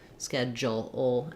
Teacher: The DU has a J sound, schedule, and then we go to a syllabic L.